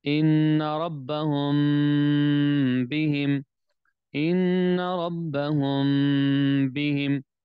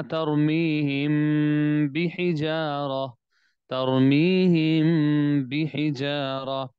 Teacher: میم ساکن کو آپ لمبا کر رہے ہیں نا، اخفا کر رہے ہیں، آواز ناک میں بھی جا رہی ہے